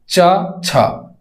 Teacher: तालु से बोली जाने वाली व्यंजन है